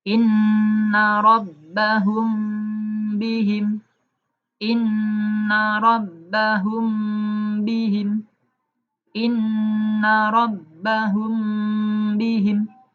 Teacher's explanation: Mimnya disamarkan dan dengung, nanti masuk ke ba. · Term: ikhfa syafawi